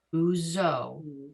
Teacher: The ayin has no sound of its own, so the only sound you're going to start with here is another u.